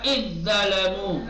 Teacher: दाल को हस्म कर देंगे और दा को तशदीद दे देंगे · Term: इदगाम